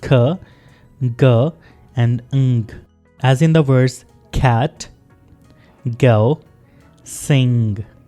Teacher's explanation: Soft palate से sounds produce होते हैं लाइक ख, ग एंड अंग, एज इन द वर्ड्स कैट, गो, सिंग।